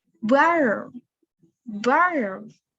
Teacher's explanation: Itu kayak A tapi mendekati O. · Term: American accent